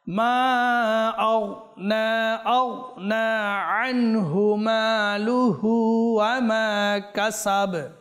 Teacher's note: এটা গাফ নয়, এটা গইন হরফে মুস্তালিয়া